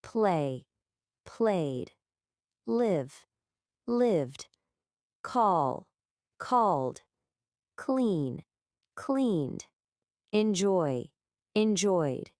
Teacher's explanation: The vibration from the vowel in play just flows seamlessly right into the D of played. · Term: D sound